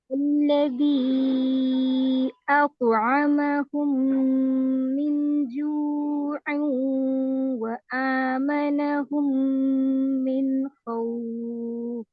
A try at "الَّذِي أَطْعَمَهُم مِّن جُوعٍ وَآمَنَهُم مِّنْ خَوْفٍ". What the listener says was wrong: بس من جو کا گننا کم ہوا اس دفعہ جو ہے نا نون ساکن کے بعد جیم جو ہے نا وہ آپ کو پتہ ہے کہ اخفا ہے لیکن آپ کا اخفا تھوڑا کم ہو رہا